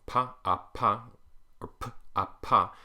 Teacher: P is a voiceless thing it's bilabial thing both of your lips and it's a plosive thing